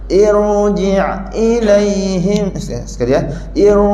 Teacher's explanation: masa kita sebut Ir tu lidah ke belakang jadi bunyi dia irji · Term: roh tebal